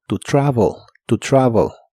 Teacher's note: La E de travel es muy suave y suena casi como O